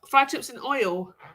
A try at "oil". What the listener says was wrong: No, it's not oil. You're putting an extra sound in there. It's not oil. It's oil.